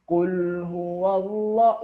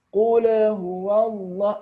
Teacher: lam yang disukun membacanya tak perlu dipantulkan karena ini bukanlah huruf Qalqalah jadi Qul huwallah langsung saja menuju ke huruf berikutnya Jadi kalau